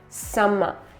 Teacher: focus on s and m, make them very long. Summer. Schwa at the end closer to a, so open your jaw nicely.